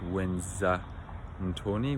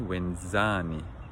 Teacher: Now the stress shifts, so it's not wenza ntoni, wenzani, because the second last syllable has to be lengthened, as always